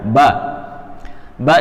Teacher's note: tempat keluar hurufnya yaitu dari dua bibir yang menempel kemudian dihentakkan sedikit